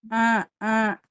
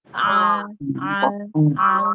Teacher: jadi ain itu dari tengah tenggorokan